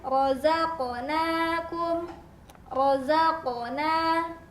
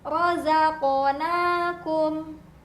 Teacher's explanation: Bunyi pantulannya terdengar seolah-olah berbunyi O. Tapi hati-hati, bukan berarti dibunyikan rozaqona, tapi dipantulkan.